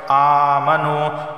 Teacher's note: ان الذین، نون پر تشدید ہے، غنہ ہوگا، یا ساکن سے پہلے زیر آیا، دال یا دیر، ذی ایک الف کے برابر کھینچ کر پڑھا جائے گا۔ آمنو، واو ساکن سے پہلے پیش ہے، ایک الف کے برابر کھینچ کر پڑھا جائے گا